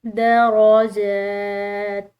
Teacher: جیم اس کے اوپر کھڑی زبر کی وجہ سے اس کو ہم نے لمبا ادا کیا، اور تا کو ہم نے وقف کے ساتھ پڑھنا ہے کیونکہ آگے وقف مطلق کی علامت آ رہی ہے۔